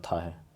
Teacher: स्पर्श दांत अघोष और महाप्राण वर्ण